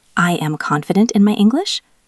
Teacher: If you go up at the end, it sounds like a question.